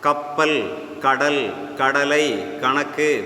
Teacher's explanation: எல்லா சொற்களிலும் அந்த க ஒலிதான் இருக்குமே தவிர கா ஒலி இருக்காது